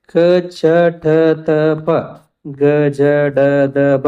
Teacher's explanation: ಕಡಿಮೆ ಉಸಿರಿನಿಂದ ಉಚ್ಚರಿಸಲ್ಪಟ್ಟಂತಹ ಅಕ್ಷರಗಳನ್ನ ನಾವು ಏನಂತ ಕರೀತೀವಿ ಅಂತಂತಂದ್ರೆ ಅಲ್ಪಪ್ರಾಣ ಅಂತ ಕರೀತೀವಿ.